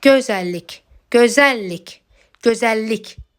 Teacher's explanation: Vurğunu sona qoyduğum zaman isə məna dolğun oldu. Yəni gözəllik sözündə vurğu sona düşür.